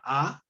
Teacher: no estoy tocando ni la lengua en el paladar, ni los labios están tocando, no estoy generando algo que impida la salida de la letra A, la vocal A.